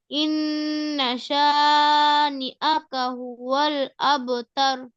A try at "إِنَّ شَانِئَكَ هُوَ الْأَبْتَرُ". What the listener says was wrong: আর কলকলাটা একটু সুন্দর করে করো। না কয় আলিফ টান?